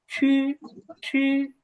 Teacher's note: কিন্তু ছটা কিভাবে উচ্চারণ হবে? ছটা হবে যে উচ্চারণ হবে আমাদের জিহ্বার আগা উপরের তালুর সাথে লেগে